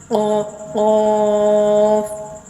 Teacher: زبان کی جڑ جب کوے کے قریب نرم تالو سے لگے تو اس سے قاف ادا ہوتا ہے۔ آپ نقشہ دیکھ رہے ہیں، یہ جو کوا آپ کو نظر آ رہا ہے، زبان کی جڑ جب کوے کے قریب سے نرم تالو سے لگے، ٹھیک ہے، زبان کی جڑ جب کوے کے قریب سے نرم تالو سے لگے تو اس سے قاف ادا ہوتا ہے، ٹھیک ہے۔